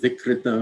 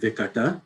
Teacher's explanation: So a good example is Sanskrit vikrita, which means kind of deformed, changed, abnormal, becomes Prakrit vikata, that's the normal sound change. Sanskrit vowel ri, or ru, however you say it, disappears in Prakrit, but it leaves as a remnant, usually a following consonant, a following dental, dantya becomes a murdanya or retroflex. So Sanskrit vikrita, Prakrit vikata, no problem.